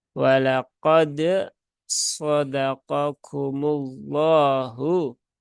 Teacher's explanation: ya dalnya ditunaikan qalqalahnya, bukan masuk ke huruf sod. · Huruf dalnya mati bertemu dengan huruf sod. Tidak boleh diidghamkan. Nah, jadi dia harus diizharkan, ya harus dibaca dengan jelas.